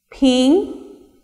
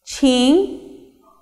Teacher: Here, ping is an unaspirated sound and ching is an aspirated sound.